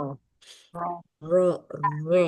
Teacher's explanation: maka bisa timbul huruf ro karena dari getaran di ujung lidah.